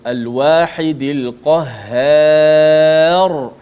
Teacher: Ra itu dimatikan dalam keadaan tebal.